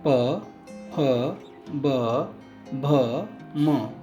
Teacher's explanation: इनको संस्कृत में अधर भी कहा जाता है। इन व्यंजनों के उच्चारण में सिर्फ ओष्ठ्य ही खुलते तथा बंद होते हैं। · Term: ओष्ठ्य व्यंजन